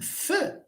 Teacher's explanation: because I bring my lower lip to the teeth, the air is pushed somehow upward. It does not come like this.